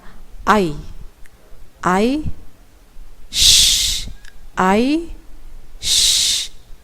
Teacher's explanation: ketika melafalkan huruf shin, kita menyebarkan angin di dalam mulut kita. Apalagi di sini shinnya bertasydid ya. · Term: tafashi